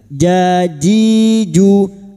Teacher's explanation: Pada saat menyamarkan bunyi nun sukun, kita sudah siap untuk membunyikan huruf jim. Huruf jim wastul lisan atau makhrajnya ada di tengah lidah